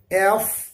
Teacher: دیکھیے ذرا سا غور کریں میں ایف کو کیسے بول رہا ہوں۔ ایف تھوڑا اندر سے آواز گول ہو کر کے اور باہر کو تھوڑا ہوا کے ساتھ نکلے گی، جس طریقے سے ہم فا بولتے ہیں۔